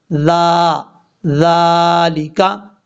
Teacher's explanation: اب اس کے بعد ہے ذالکا، ذال کو بغیر سیٹی کے ساتھ پڑھنا ہے، ذال کا مخرج ہے، جس بندے کو ذال کا مخرج صحیح طریقے سے آتا ہے، پتہ چل گیا کہ ذال ادا کہاں سے ہوتا ہے، وہ کبھی بھی یہ غلطی نہیں کرے گا، ذال میں سیٹی نہیں آئے گی کیونکہ یہ حروف صفیریہ میں سے نہیں ہے · ذال کا مخرج ہے زبان کا سیدھا، اوپر والے جو دو دانت ہیں ان کا اندرونی کنارہ، اس اندرونی کنارے سے زبان کا سیرا لگے گا تو یہ ذال پڑھا جائے گا